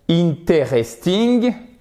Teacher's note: Enfin, il y a un E à l'écrit, mais on ne l'entend pas.